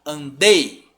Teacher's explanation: O I some totalmente perto do E.